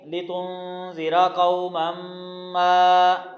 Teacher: نون پہ یہاں پہ ہم اخفا کر رہے ہیں، نون کو چھپا کر پڑھیں گے، را موٹا پڑھیں گے، قاف پر زبر ہے، قاف ویسے ہی موٹا پڑھا جائے گا لیکن اس کے بعد واو ہے، واولین بن جائے گا۔